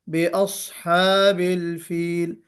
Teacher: صاد کو موٹا پڑھنا ہے. اس میں استعلا بھی ہے اور اطباق بھی ہے